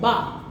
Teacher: बा के उच्चारण में होंठ जुड़ जाते हैं। जब हम कहते हैं बा तो हमारे होंठ जुड़ रहे हैं, बा के उच्चारण में होंठ जुड़ जाते हैं, बा के उच्चारण में होंठ जुड़ जाते हैं।